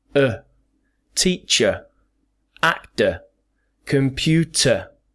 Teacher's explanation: in these words the sound obviously becomes our favorite sound the schwa